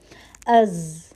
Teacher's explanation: ہوا کا چلنا محسوس نہیں ہوتا ہے، جہر کی کوالٹی ہے